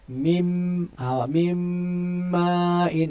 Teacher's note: Mim ma'in yang kita dengung tu ialah pada mim. Mim ma'in. Maknanya idgham kamil lah.